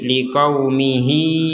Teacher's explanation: Ya kecil yang di bawahnya huruf ha ini menandakan bahwa harokat dari huruf ha-nya ini kita panjangkan 2 harokat